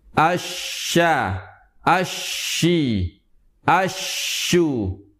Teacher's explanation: tiga huruf tersebut keluar dari lidah bagian tengah menempel ke langit-langit bagian atas